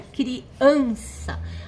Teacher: Então é criança. A sílaba tônica é o an, que é a sílaba forte.